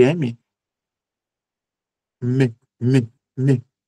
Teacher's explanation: Se eu tampo o nariz, nem sai. Ele é um som nasal. Então, se eu tampo o nariz, o ar para de passar pela cavidade na pelas costas nasais, logo o som para completamente.